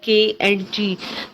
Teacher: उसके बाद है जी velar, this sound is produce with the back of the tongue एंड the soft palate